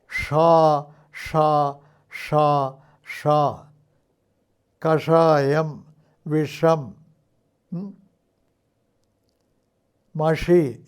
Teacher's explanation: ഷയുടെ കാര്യത്തിൽ നാവിന്റെ തുമ്പ് വളയണം എന്നുള്ളതാണ്